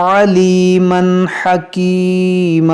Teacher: یہاں پر دیکھیں تنوین کے بعد حا ہے، حروف حلقی، تو یہاں پر اظہار ہوگا